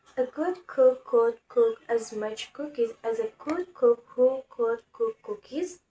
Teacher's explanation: the sound g, as in the word good, is voiced, meaning there is vibration of the vocal cords. This sound is also formed at the velar and uses the same plosive manner. · the sound k as in the word cook, which is a voiceless sound, meaning there is no vibration of the vocal cords. This sound is formed at the velar, which is the back part of the tongue approaching the soft palate and produced using a plosive manner, where the air is briefly held and then released suddenly.